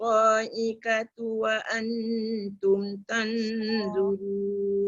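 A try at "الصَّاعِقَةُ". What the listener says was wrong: Sa'iqatu. Qaf tebal. Sa'iqa. Jangan ka. iqatu. Sa'iqatu dia jadi ka. Kena sebut perlahan-lahan. Satu dekat ta tadi kesilapan besar dia dekat ta dia qalqalah. Lepas tu qaf jadi ka. Tu salah besar tu.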